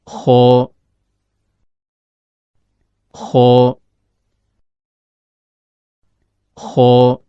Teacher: Huruf kho keluar dari ujung tenggorokan, yaitu berada antara langit-langit atas bagian belakang dengan akar lidah.